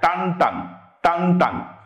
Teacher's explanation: তাহলে আমাদের দুইটা তালু একটা শক্ত তালু আরেকটা নরম তালু এই শক্ত তালু এবং নরম তালুর মাঝখানে যে ফাঁকা জায়গাটা আছে ও ফাঁকা জায়গা থেকে এটা উচ্চারিত হচ্ছে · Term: মূর্ধা